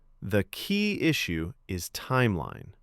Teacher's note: with a soft fall on timeline